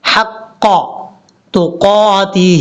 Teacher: گے، آمنوا اتقوا اللہ حق تقاتہ، یہاں پر ہا بریک ہے، اس ہا کو بریک پڑھنا ہے، بھاری ساؤنڈ کے ساتھ نہیں پڑھنا